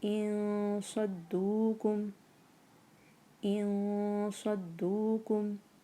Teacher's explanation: نون کو بالکل بھی زبان سے نہیں بولنا ہے، ہم نے اس کو غنہ کرنا ہے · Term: اخفاء